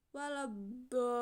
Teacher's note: cara membaca mat ini harus panjang hingga 3 kali mat tobi atau diibaratkan sekitar 6 harokat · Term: Mad lazim mutakal kalimi